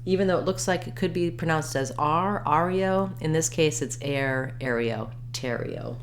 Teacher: Letters AR say the air diphthong in Ontario.